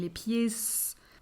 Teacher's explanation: It's the same sound, so it doesn't really matter here. But I can hear that he was pronouncing the S of pied